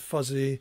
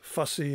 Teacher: So in English, there are two words, fussy and fuzzy, that you can hear that they're minimally distinct. The difference is that there is a voiced and voiceless fricative